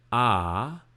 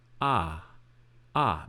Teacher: it's gonna go from ah long sound to ah ah medium